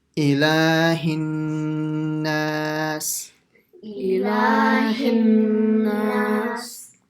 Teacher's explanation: the only thing here is the ghunna on the nun, and then to stretch it as well · a sound which comes out from the nose for the duration of one alif or two harakas